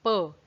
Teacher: प, क्योंकि ये दोनों होंठों से बोला जाता है, तो ये पूरा ओष्ठ ध्वनिया।